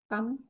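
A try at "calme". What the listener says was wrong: না, এটা ইংরেজিতে হয় কাম, হ্যাঁ, কয়াকার ম হয়, বাট ফরাসিতে কালম হবে, হ্যাঁ, কয়াকার লয় ম। ওকে, কালম লয় ম, কালম ইংরেজি ফরাসিতেও এলটা সাইলেন্ট থাকে না, ইংরেজিতে সাইলেন্ট থাকে, ঠিক আছে, ইংরেজিতে বলি আমরা কাম, হ্যাঁ, আর এটা কালমই হবে, কালম, হ্যাঁ, ওকে কালম।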